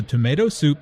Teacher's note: Notice also that tomato soup, roast beef, and mashed potatoes are compound words. The stress falls on the second word in each phrase.